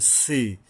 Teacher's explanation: জিহ্বার আগার থেকে পাতলাভাবে বা নরমভাবে এই যে সিনটা উচ্চারণ করতে হবে, কিছুটা বাতাস বের হবে